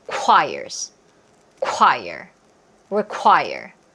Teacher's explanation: QU 사운드는 KW 소리입니다. 그래서 쿼. 둘 다 소리를 내셔야 돼요.